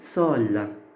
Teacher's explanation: Ça c'est sol et là c'est so. Sol se termine avec une consonne, n'est-ce pas? L. Donc là je mets le O ouvert.